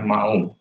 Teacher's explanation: suku katanya dua menjadi ma dan hu, memisahkan a dan hu, berarti itu bukan diftong alias deretan vokal biasa.